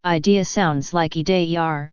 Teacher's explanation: adding an R sound to words ending in a vowel